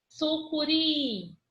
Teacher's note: A última sílaba é a que eu me prolongo mais na pronúncia. A que eu me prolongo mais é a sílaba mais forte.